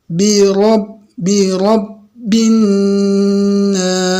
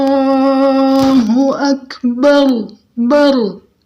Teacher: Birob bin nas. Ya biar ro kita kedengaran tebal, biar kedengaran tafkhim, punggung lidah itu kita angkat sedikit, jadi tebal dia. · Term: Ro tafkhim